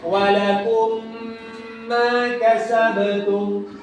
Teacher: cara membacanya ditahan panjangnya 2 harakat. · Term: idgham mimi